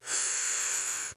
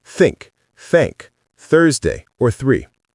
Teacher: It's got no vibration in your vocal cords. Your vocal cords are relaxed. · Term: voiceless TH